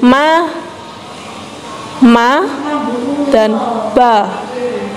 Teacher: huruf ma dan ba, bibir kita membungkam